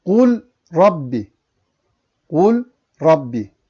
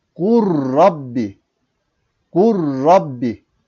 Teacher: lam harfini okumadık lam harfi yerine ra harfini iki defa okuduk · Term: idgam mütekaribeyn